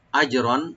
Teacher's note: জিমে একটু আমরা হালকা কলকলা করব, আর রার উপরে যে তানবিন আছে, তানবিনে আমরা এখানে এজাহার করব, আমরা গুন্না হবে না, যেহেতু আইন আসছে হরফে হালাক থেকে।